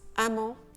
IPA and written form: amɑ̃ (EMMENT)